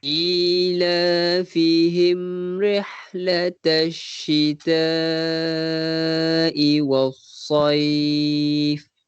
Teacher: perkataan rihlatash syita, syita tu kita panjangkan 4 ataupun 5 harakat. Mungkin mad wajib muttasil.